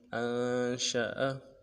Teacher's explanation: حمزہ کو نون کے ساتھ ملانا ہے، نون ساکنہ غنہ کریں گے ، شین کو تفشی کے ساتھ ادا کرنا ہے، شین کے